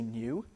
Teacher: new is one of these words that you do sometimes hear a yod in some dialects of British English. Sometimes they do say new.